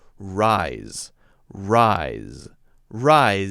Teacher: notice this is the S but it's still the Z sound rise rise rise you can carry it long if you want